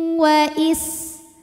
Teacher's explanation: Sin punya sifat yang tidak memiliki lawan, namanya sofir, ada desis seperti suara ular.